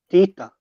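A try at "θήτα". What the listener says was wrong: Theta. You need to add, make it a little bit fatter T, like a Thi, as we say Theodore, Theodore, Theta.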